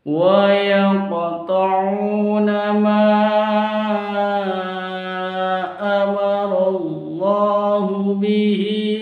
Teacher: di situ ada qaf sukun, tandanya qalqalah ya, qalqalah sughra, karena ada di tengah kalimat, ada di tengah kalimat qalqalah sughra.